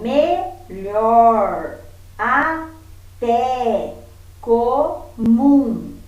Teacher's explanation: em todas as palavras a última sílaba é pronunciada com mais intensidade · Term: sílaba tônica